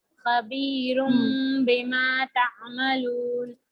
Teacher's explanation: यहाँ पे नून की आवाज को मीम से बदल कर पढ़ेंगे। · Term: इखलाब